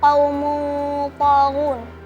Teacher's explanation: dibaca samar dan mendengung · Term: ikhfa hakiki